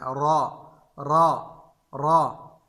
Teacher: را کو مطلقاً ہم نے پر پڑھنا ہے، یعنی موٹا پڑھنا ہے